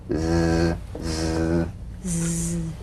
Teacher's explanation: The Z vibrates in that very small open space between the tongue and the upper teeth. Right in here. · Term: voiced S sound fricative